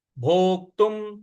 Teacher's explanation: जो आधा क है इस पर हमको आघात देना है भोक्तुम और त पर जो अनुस्वार है उसका उच्चारण हमें म